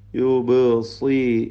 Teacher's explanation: സ്വാദിന് കുറഞ്ഞ തഫ്ഹീം കൊടുത്തുകൊണ്ട് ഒതുക.